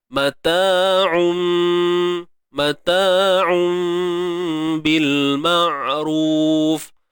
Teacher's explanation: Tukarkan sebutan tanwin mata'un kepada mata'um. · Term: iqlab